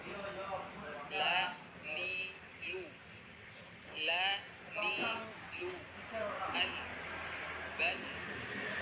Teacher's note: Landasan atau tempat menempel tepi lidah bagian depan adalah gusi atas. Keluar dari sini 1 huruf, yaitu lam.